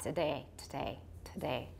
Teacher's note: we may also have a voiceless vowel there, and it may get really short, so it becomes a syllabic stop